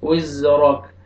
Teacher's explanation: را کو موٹا کر کے پڑھیں گے، کاف ساکن ہو جائے گا جب سٹاپ کریں گے، وزرك۔